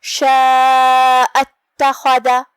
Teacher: کلمت اتخذ میں شروعات میں حمزۃ وصل ہے، حمزۃ وصل کو ظاہر نہیں کرنا ہے، لہذا ہم کلمت شاء کے حمزہ کو پڑھ کے سیدھا حرف تا پڑھیں گے